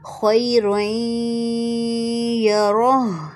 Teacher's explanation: تنوین کے بعد اگر یا اجائے تو وہاں پر غنہ ہوگا